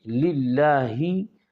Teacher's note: اللہ کا لام باریک ہے